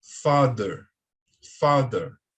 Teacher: essa pronúncia do TH, ela é mais firme, parecendo com o D.